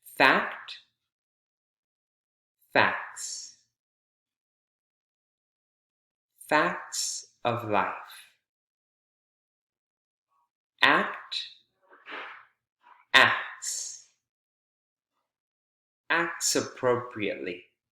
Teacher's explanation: notice that the T sound the middle T right we said often times when we add s or e s the middle t or middle D sound goes away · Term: omission of consonant sounds